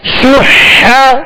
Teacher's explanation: ہا کو وسط حلق سے ادا کرنے، درمیانے حلق سے ادا کرنے